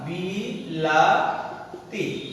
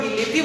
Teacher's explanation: তাহলে বিলাতিটা যখন আমরা বিলিতি বলি সেই ক্ষেত্রে মাঝখানের ধ্বনিটা পরিবর্তন হয়ে গেছে। তাহলে সাইডের দুইটা ধ্বনি মাঝখানের ধ্বনিটাকে পরিবর্তন করে হয়ে গেছে বিলিতি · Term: মধ্যগত স্বর সংগতি